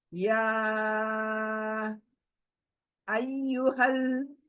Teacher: ایک تو کھڑی الف آئی 2 آواز، پھر مد آیا 3 آواز، تو تقریباً 5 آواز کی مد ہے یہاں پر. تو ہمیں تھوڑا کھینچ کر پڑھنا ہے.